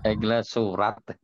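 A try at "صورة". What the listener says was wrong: Nah, surah itu pakai sod. Kalau pakai sod itu gambar atau foto. Kalau dia pakai sin, itu surat. Nah, di situ bedanya ya.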